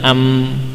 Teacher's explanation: Tekanannya tidak sekuat ba karena apa? Sebagian suaranya melewati hidung. Ya, ini terlihat ada rongga yang terbuka karena memang suara mim harus ya secara tabiat memang harus melewati bagian khayshum.